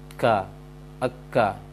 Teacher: Kaf itu pangkal lisan yang arah ke mulut, pangkal lisan yang arah ke mulut, sehingga terasa di langit ketika mengucapkan kafnya, terasa angin di langit nantinya. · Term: makhraj kaf